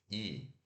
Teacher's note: A nossa língua vai lá para cima no nosso céu da boca, na parte mais alta da nossa boca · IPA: /i/